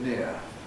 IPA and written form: nɪə (near)